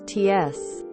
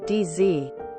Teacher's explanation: affrication of t and d t becomes t s d becomes d z